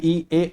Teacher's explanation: इ ए को बोलने में जीभ का अगला भाग ज्यादा प्रभावित होता है। और इसलिए ये अग्र स्वर होते हैं।